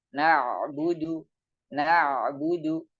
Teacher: Jadi ada sedikit memanjang sedikit pengucapannya huruf ain.